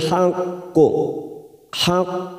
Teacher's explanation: ada huruf q yang bertasdid maka di sini Kita pantulkan Kuat namanya bacaan qalqala Kubro